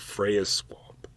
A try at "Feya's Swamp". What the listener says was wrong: Feya's Swamp. Don't pronounce the R when it's not there.